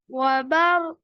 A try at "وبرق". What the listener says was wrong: কফের আওয়াজ, কলকলার আওয়াজ শুনতে পাচ্ছি না, ওয়া বারক।